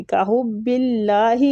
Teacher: بو کو کھینچیں گے وہ مد کی وجہ سے کحب اللہ ادھر اللہ کے لام کو باریک پڑھیں گے